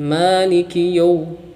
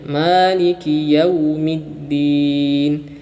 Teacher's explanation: bacaan lin yang terjadi pada huruf waw yang sebelumnya fathah itu bunyinya u, bukan o ya. Bunyinya u bukan o.